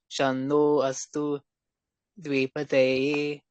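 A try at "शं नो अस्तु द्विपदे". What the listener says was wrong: Yeah, they you have to take a bit higher. The tone has to go higher. Shamno Astu Dvipade.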